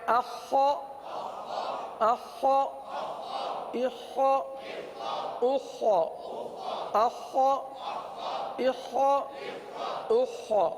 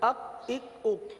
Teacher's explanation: خا کے بجائے اخ کاف بن جاتا ہے، خا کے بجائے کاف بن جاتا ہے۔